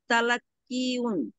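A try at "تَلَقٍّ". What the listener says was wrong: না, পেশ পেশ, কফের উপরে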